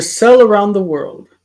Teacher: My sister doesn't distinguish between sell and sail. There's no difference.